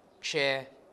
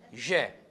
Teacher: So, che is voiceless and je voiced. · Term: voicing